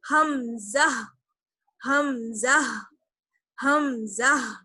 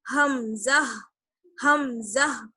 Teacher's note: حلق کا سب سے نیچے والا حصہ جو ہے وہاں سے ادا ہوتا ہے حمزہ